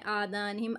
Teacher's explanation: आ खड़ा ज़बर है, इसको भी खींचेंगे थोड़ा सा। आज़ानिहिम, यहाँ पे मीम मुशद्दद है, गुन्ना करेंगे।